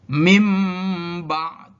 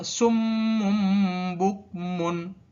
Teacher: iqlab yaitu membalik bunyi nun mati dan tanwin menjadi bunyi mim mati ketika bertemu dengan satu huruf iqlab, yaitu huruf ba